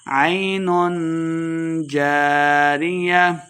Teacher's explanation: عین اخفا یعنی غنہ کر کے پڑھیں گے